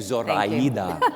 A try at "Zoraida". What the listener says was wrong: No, it would be Zoraida. No Z, pronounce it like an S, Zoraida.